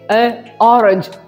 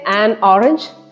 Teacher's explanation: n is simply added to bridge between two vowel sounds